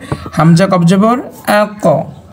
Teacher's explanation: হ্যাঁ তীর চিহ্ন কেন দেওয়া সেটা আপনাকে বলছি সেটা হচ্ছে আপনি যখন হামজা কবজর আ উচ্চারণ করবেন বা হামজা আ উচ্চারণ করবেন দেখেন আপনি শেষে যে আওয়াজটা বের করছেন সবার শেষে আযে শেষে যে আওয়াজটুকু বের হয়েছে সেটা দেখবেন উচ্চগামী মানে উপরের দিকে হালকা মোটা হচ্ছে